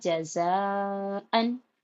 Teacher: تو جب حمزہ اسی کلمے میں آتا ہے تو مد متصل ہوتا ہے، اور مد متصل کو 4 سے 5 الف کے برابر کھینچ کے پڑھا جاتا ہے۔ تو اس کو ہم یہ مد کو کھینچتے ہوئے پڑھیں گے، اور یہاں پر حمزہ پر 2 زبر کی تنوین ہے، تنوین میں نون ساکن کی آواز ہوتی ہے۔